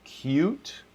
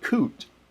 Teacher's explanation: the u some people call it liquid u like cute and this is the y sound before an ooh